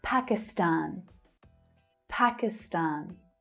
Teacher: So again, you'll always hear the stressed syllable pronounced slightly differently depending on which native speaker you're listening to. But you'll hear a strong first syllable and the main third syllable stressed.